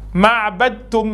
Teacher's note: Le T va avaler le dal, parce que le dal, il a soukoun.